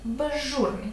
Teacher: з є свистячим ж шиплячим і з уподібниться до ж